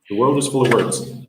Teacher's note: The W sound is just some rushing air because there's no solid anything in it.